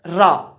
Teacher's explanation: रा जो वर्ण होता है यह क्या होता है? प्रकंपित या लुंठित वर्ण होता है।